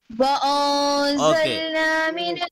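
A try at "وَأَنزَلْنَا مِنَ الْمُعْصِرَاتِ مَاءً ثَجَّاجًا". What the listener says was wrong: Make your lips wider. Make your lips wider. It is look, your lips should be in this shape.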